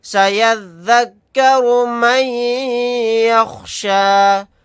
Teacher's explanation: سین زبر سا، یا ذال زبر ید، سید، ذال کاف زبر ذک، سیذک، کاف زبر کا، سیذکر، را پیش رو، سیذکر، میم یا زبر مئی، یا خوا زبر یخ، شین کھڑا زبر شا، یخشا، سیذکر من یخشا. نون ساکن کے بعد یہاں پر یا ہے تو یہاں پر ادغام یرملون کا قاعدہ ہوگا، یا کے اندر ادغام کر کے پڑھیں گے